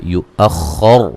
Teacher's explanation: یؤخر خو کو موٹا ادا کریں گے اور را کو بھی موٹا ادا کریں گے وقفاً وصلاً